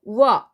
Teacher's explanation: 단모음 우와 단모음 어가 만나서 이중모음 워가 됐습니다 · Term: 반모음화